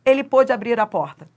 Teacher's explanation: A sílaba tônica é o pô